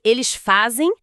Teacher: Quer dizer que quando eu falo eles fazem, esse zem final tem o som de um ditongo, como se fosse zen.